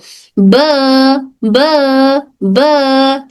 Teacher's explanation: दोनों हंठ अपर and lower lips पूरी तरह बंद होते हैं। पहले दोनों होठ पूरी तरह से बंद होते हैं और फिर खुलते हैं। · हमारे हंठ के अंदर वाला हिस्सा ये जो अंदर का हिस्सा होता है ये दोनों होठों का गीला वाला हिस्सा टच होकर हर्फ ब अदा होता है। दोनों हंठ अपर एंड लोअर लिप्स पूरी तरह बंद होते हैं।